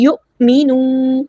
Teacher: یو، حمزہ ساکن کی آواز واضح جھٹکے سے آنی چاہیے. یؤمنوا، واو مد آئی 2 کاؤنٹس لمبا کریں گے